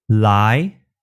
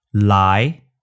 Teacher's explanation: up towards the roof of your mouth lie lie but in Cantonese only the tip of your tongue comes up and it reaches just behind your front upper teeth